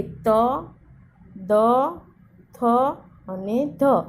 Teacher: તો કે ત, દ, થ અને ધ આપણે બોલીએ એટલે દાંત સાથે છે એ જીભ અડે છે. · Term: દંત્ય